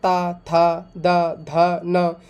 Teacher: हम जब इन्हें उच्चारण करते हैं तो हमारे क्या दांतों से जीभ स्पर्श होती है, जो जीवा होती है वो दांतों से स्पर्श करती है, टच करती है